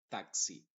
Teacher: esa x está compuesta de dos sonidos una es la k y la otra es la s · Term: x original